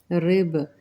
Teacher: यहाँ पे बा के ऊपर जज़म आ जाएगी तो कलकला होगा